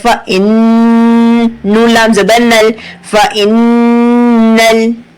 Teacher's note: تو آپ کی زبان جو ہے تالو سے چپک جاتی ہے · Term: غنہ